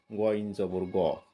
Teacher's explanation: গ একটু মোটা হবে কণ্ঠনালী নিচের অংশ থেকে